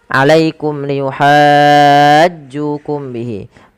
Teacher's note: mim mati yang pertama kita perjelas karena dia ada izhar syafawi yang di mana suara mimnya harus diperjelas